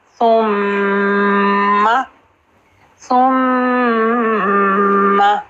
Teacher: ٹپ اوپر والے دانتوں کے کناروں سے ٹچ ہوگی، ثم، ثم، میم کو تشدید ہے، ٹو حرکت کا ہولڈ